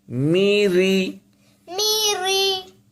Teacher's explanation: باریک را پڑھا جائے گا۔ ایسے ہی را کو اگر اکیلا بولیں گے تو رو موٹا بولتے ہیں، لیکن جب زیر ہو تو پھر یہ باریک ہو جاتا ہے